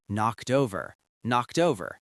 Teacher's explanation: Notice how the d sound at the end of knocked connects to the o and over. Knocked over.